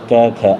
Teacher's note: क ख अघोष है, इनको उच्चारित करेंगे तो कोई गुंजा नहीं